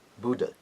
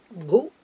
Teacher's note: It should be Bu. It's a short letter, and it is a third letter, so it's a what we call the Alpa Prana letter, non-aspirate letter, Bhu, and then Dha is always the aspirated Dha.